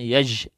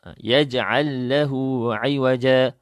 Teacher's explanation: Maka jim tu kita jangan ada angin yang terlebih.